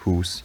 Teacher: The exact pronunciation differed depending on the local accent, but it generally had whatever the traditional local vowel was in words like mouth and house. So in accents where you still had oo in mouth, hoose, you'd have thoo